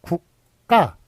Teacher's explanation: 무성음과 무성음이 만났을 때 안울림 소리와 안울림 소리가 만났을 때 뒤에 있는 것이 된소리가 된다라는 한국의 된소리대기 현상이 있는데요. 이것은 표기에 반영을 안 하기로 했습니다. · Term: 된소리되기 현상